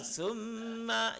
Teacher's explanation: Jadi ketika kita baca sum, getar dia sampai rongga hidung.